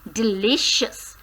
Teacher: So stress comes on the second syllable, that is li.